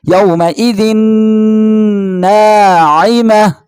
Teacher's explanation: یومئذ یہاں پہ تنوین ہے، تنوین کے بعد نون آ رہا ہے تو یہاں پہ ہوگا تنوین ادغام مع الغنہ